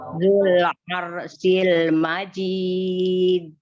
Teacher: Majid itu mad arid li sukun karena tobi'i ketemu dengan huruf yang disukunkan karena waqaf. Ya. Dan itu termasuk kolkola kubro.